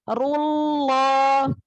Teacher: Jadi langsung ke lam, lamnya ya, jangan ada waw.